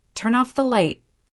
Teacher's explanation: The N from turn connects to off. It becomes one smooth sound.